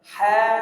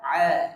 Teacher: mengucapkan huruf ha epiglotisnya kebuka ketika mengucapkan huruf Aa epiglotisnya ketutup